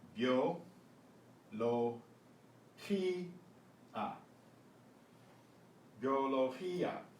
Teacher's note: the G before an E or an I is pronounced with that guttural sound